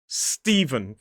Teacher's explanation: because the S is next to the T, it starts — the T starts to sound more like a /d/. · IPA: /ˈstiːvən/